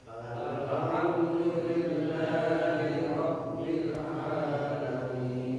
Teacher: Ini A-nya panjang, bukan ngalamin ya. Kalau orang Jawa terutama biasa kadang ngalamin. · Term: Ain